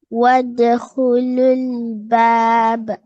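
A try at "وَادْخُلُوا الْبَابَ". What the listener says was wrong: Very good. Very well then.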